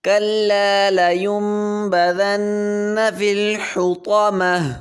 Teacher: گا، لينبذن، كلا لينبذن في الحطمة، طا کو موٹا کریں گے، تا اور طا میں فرق کریں گے، تا باریک ہے اور طا موٹا ہے ، كلا لينبذن في الحطمة، آخر میں تا آ گئی ہے،